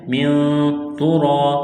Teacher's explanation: ہے، آواز ناک میں چھپائیں گے، غنہ کریں گے، من ترا، تا کو باریک کرنا ہے، را کو موٹا کرنا ہے، را کے اوپر زبر ہے · حروف اخفا ہے، آواز ناک میں چھپائیں گے، غنہ کریں گے ، من ترا، تا کو باریک کرنا ہے، را کو موٹا